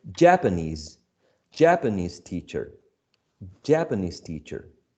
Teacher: so japanese teacher japanese teacher is not possible in general terms there is a shift a movement of this primary stress to the uh first syllable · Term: stress shift